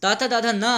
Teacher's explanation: ता वर्ग में ताथा दाधा ना आता है, जो कि हमारी जीभ इनके उच्चारण में दांत को जाकर के स्पर्श करती है